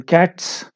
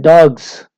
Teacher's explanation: in cats, it is s pronunciation, while in dogs, it is z pronunciation